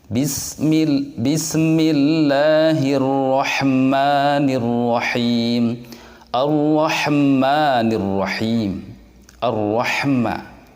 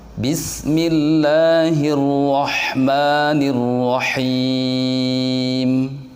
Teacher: Ya, harusnya Ar-Rahma, bukan Ar-Rahma. Tidak boleh ada pantulan di situ karena huruf sin dan ha bukan bagian dari huruf yang mempunyai sifat qalqalah.